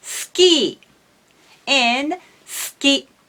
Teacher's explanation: voice actors and announcers usually omit the vowel u in such cases.